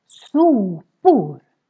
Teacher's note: Here the O gets really long because we have just one consonant coming after.